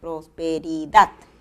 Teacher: acento prosódico en la palabra prosperidad está en la última sílaba